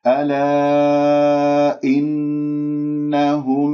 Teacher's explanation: نون مشددة الغنة أكمل ما تكون ولا تنبر. إنهم خطأ، جبت الغنة خلاص ما تجيب نبر أو أي شيء معاها.